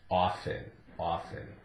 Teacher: it was often and it's changed somewhat over the years but now it's accepted as a silent T